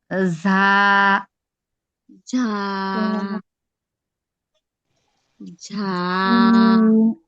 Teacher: জিহ্বার আগা নিচের সামনের দুইটা দাঁতের সঙ্গে লাগবে কিন্তু উপরে কোথাও লাগবে না